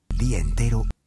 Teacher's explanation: En el límite entre dos palabras, a veces omitimos una vocal. En este caso, la A fue omitida por completo.